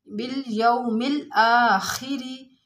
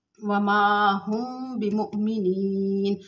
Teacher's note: یعنی وما ہم بمؤمنین، تھوڑی دیر آواز بند کریں گے اور ما میں الف مدہ ہے، تھوڑا سا کھینچ کے پڑھیں گے